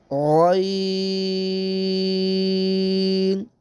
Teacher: اس کو موٹا بھی کرنا اور لمبا بھی کرنا ہے